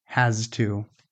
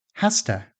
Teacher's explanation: But natural conversational speech often sounds more like hasta. The z, the voiced z, becomes voiceless before the t.